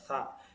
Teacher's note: tsa ujung lidah bertemu dengan ujung gigi seri atas. Jadi nempel ee lidah kalian sama ujung gigi seri atas kalian.